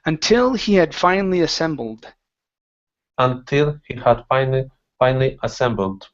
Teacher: So the stress is at the very end.